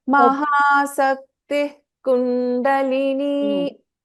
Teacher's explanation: in the process of telling a Visarga, half Visarga after Sakti, we tend to put little more effort on ta, which is not correct.